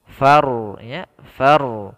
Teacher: Maka ro di sini kita baca dengan ro tebal.